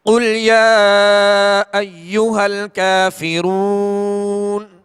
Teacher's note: اب اصل میں کافرون نون پر زبر ہے، جب وقف کیا تو کیا ہم نے؟ ساکن کر دیا، یہ سکون عارضی کہلاتا ہے.